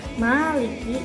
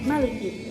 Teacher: Yang pertama ma-nya panjang, yang kedua ma-nya tidak panjang.